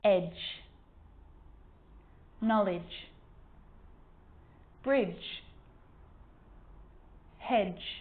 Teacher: a d can be very quiet not quite silent but very quiet in front of a g